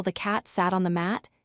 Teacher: In the example, the cat sat on the mat, the words the and on stay soft and unstressed. · the cat sat on the mat, cat, sat, and mat receive strong emphasis because they are content words. Function words stay weak and unstressed. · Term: sentence stress